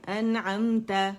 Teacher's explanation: تو نون کا اظہار ہوتا ہے ایک کاؤنٹ کے لیے. اس کے مخرج پہ جاتے ہیں نون کے, اسے پوری صفات کے ساتھ ادا کرتے.